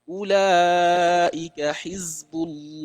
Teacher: we pronounce the word of Allah with a very heavy closed mouth